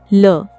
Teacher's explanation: ल व्यंजन को पार्श्विक व्यंजन भी कहा जाता है। इसके उच्चारण में हवा जीभ के दोनों पार्श्वों से यानी बगल से निकलती है, जबकि जीभ का अग्रभाग मसूड़ों को छूता है। यह भी एक अंतःस्थ व्यंजन है।